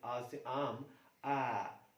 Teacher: जैसे हम अगर हम आ उच्चारण करते हैं, आ से आम, आ, तो पूरा उच्चारण, पूरा मुंह खोल के करते हैं आ, तो ये है हमारा विवृत, ओपन, हमारा मुंह पूरा खुल जाता है